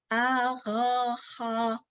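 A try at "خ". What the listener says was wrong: A-gha-kha. Tebalkan lagi. Kha. Ngambilnya jangan dari tengah, jangan di ha, tapi dari atas, tenggorokan atas. Kha, a-gha-kha.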